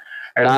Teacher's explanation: ड़ा का उच्चारण स्थान मूर्धन्य होता है, और एक इसके अंतर्गत आता है सघोष होता है और अल्प प्राण होता है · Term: उच्छिप्त व्यंजन